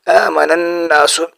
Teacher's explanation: آگے ہے آمن الناس، آمن الناس، نون کے اوپر شد ہے، جہاں بھی نون کے اوپر شد آ جائے تو وہاں غنہ ہوتا ہے۔ نون اور میم کے اوپر جب شد آ جاتا ہے تو وہاں غنہ ہوتا ہے، تو یہاں بھی نون کے اوپر شد ہے تو یہاں پہ ہم غنہ کریں گے، آمن الناس۔